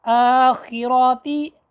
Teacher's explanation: یہ گلے کے ابتدائی حصے سے حرف خا ادا ہوتی ہے اور ہلکی سی تالو میں خراش بھی آتی ہے اس کی ادائیگی میں، آخراتی، اور یہ موٹے حروفوں میں سے ہے۔